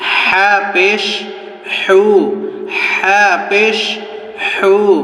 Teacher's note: হাটি উচ্চারণ করার সময় একদম কণ্ঠনালীর মধ্য থেকে হা পাতলা করে বের করবেন আওয়াজটি